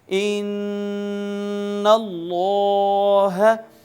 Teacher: یہاں بہر صورت غنہ کریں گے یعنی ناک میں آواز لے جا کر گنگنائیں گے۔